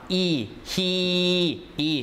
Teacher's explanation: the shape of the tongue is high towards the roof of the mouth towards the pallet you see whereas when you do the ooh o as in